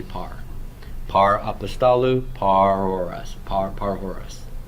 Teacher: you're not ceasing all the airflow to produce a rho, are you? In fact, air is escaping from your mouth.